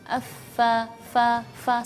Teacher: Hams itu yaitu berdesis lepas, ya. Jadi f, jadi fa maupun berharakat fathah, kasrah ataupun dhamma, yaitu ataupun juga sukun, itu berdesisnya lepas. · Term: al-hams